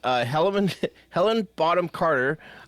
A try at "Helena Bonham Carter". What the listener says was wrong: Helena. You said Helen. You said